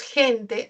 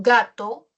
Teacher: Cuando decimos gente, suena como una fricativa, y cuando decimos gato, suena como oclusiva.